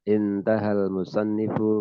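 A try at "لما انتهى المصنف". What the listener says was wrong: Ini hamzahnya wasal, langsung saja masuk ke itu. Ya, nun yang sukun. Lamantaha. Ya, itu kan hamzahnya wasal. Dalam metode pengajaran tajwid, ajaran ilmu tajwid, hamzah wasal ketika di tengah kalimat dia anggap tidak terbaca. Anggap tidak ada, padahal ada. Memang begitulah keadaan hamzah wasal ketika di tengah kalimat. Keberadaannya dianggap tidak ada. Nah, laman musannifu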